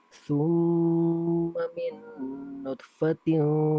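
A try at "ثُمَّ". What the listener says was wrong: dikolkolahkan, kurang kolkolah itu. Hurufnya domma, mimnya itu domma.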